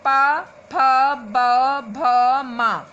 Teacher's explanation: आप बोलेंगे तो दोनों ओठ आपस में स्पर्श होते हैं। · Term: पा वर्ग